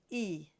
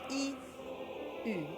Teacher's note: So the way to get your U is to start with an E sound, but make sure it's not an E with a smile like the word cheese, but it's forward with the tip of your tongue stuck to the bottom teeth